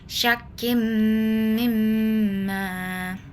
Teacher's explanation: tanwin digabungkan ke huruf mim dengan dengung dua harakat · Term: idgham bigunah